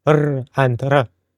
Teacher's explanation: And Scottish accents use rolled R's like r and r.